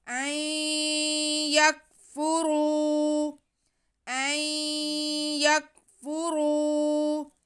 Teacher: این یک، این یک، آگے فا پہ پیش، را پہ بھی پیش اور واو ساکن، را پہ پیش ہے اس لیے را موٹا پڑا جائے گا اور ساتھ میں واو ساکن ہے تو ہم را کو کھینچیں گے کیونکہ واو مدہ ہے